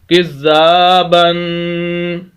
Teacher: کاف کو زال کے ساتھ 2 مرتبہ زال پڑھا جائے گا، شد ہے، سخت کر کے پڑھنا ہے، آواز کو روک کر پڑھنا ہے، آگے الف مدہ ہے، زال کو لمبا کریں گے، کزا، با دو زبر بن، تنوین آگی، غنہ کریں گے